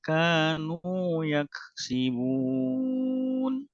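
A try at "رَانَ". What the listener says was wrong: Tinggal ini ya, roknya masih tipis ya, masih rona ya, rona ya, belum rona ya, pangkal lidahnya dinaikkan. Ya, tinggal tadi ya yang huruf-huruf tebal ya perlu dilatih ya, huruf ro ya, itu huruf po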